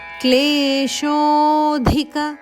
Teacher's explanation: ಶೋ ದೀರ್ಘ ಆನಂತರ ಅವಗ್ರಹ ಅಂದ್ರೆ ಇನ್ನು ಒಂದು ಕ್ಷಣದಷ್ಟು ಜಾಸ್ತಿ ದೀರ್ಘ ಹೇಳಬೇಕು